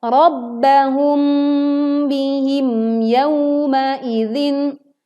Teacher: dibaca jelas mim sukun nya tetapi tidak menimbulkan pantulan sehingga eh biarkan sebagian suara mengalir ke rongga hidung dan kita